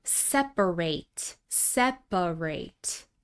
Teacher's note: This word has three syllables, and notice that we don't reduce the vowel in the final syllable.